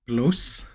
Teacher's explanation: that's replacing the r with an L